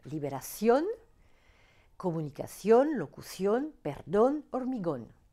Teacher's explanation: les mots terminés par N, mais dont l'accent tonique s'entend sur la dernière syllabe